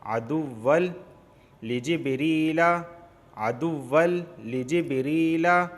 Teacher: تنوین کے بعد لام آیا ہے تو ادغام ہوگا، غنہ نہیں ہوگا، کیونکہ لام اور را میں غنہ نہیں ہوتا